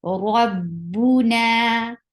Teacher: Rabbu for dhamma, circle your lips. Na 2 counts long because this is alif sakina followed by fatha, so it will be 2 counts long vowel.